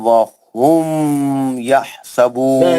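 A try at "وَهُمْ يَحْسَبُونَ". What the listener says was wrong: نہیں وہم کیوں پڑھ رہے بھائی؟ میم کو کیوں کھینچ رہے میرے بھائی؟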